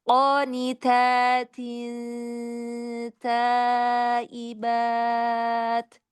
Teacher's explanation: Qof-nya mau lebih bulat lagi.